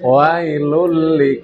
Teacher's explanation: wailulli jangan dipanjangkan, nggih, jangan diseret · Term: pendek